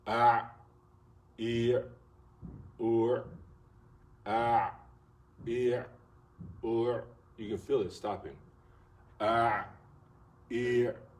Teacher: Ain is from the middle of the throat. Ah, ear, ear, you can feel it stopping.